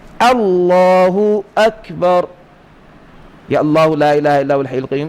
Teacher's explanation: اللہ اکبر، یا اللہ لا الہ الا هو الحی القیوم، ان سارے کلموں میں خاص طور پر آپ حمزہ جو الف کی صورت میں لکھا ہوا ہے اس کو باریک کر کے پڑھیں